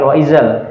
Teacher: Kalau terlalu ke bawah sampai ke gigi jadinya wa izal. Ini apa? Wa idzal insyaru.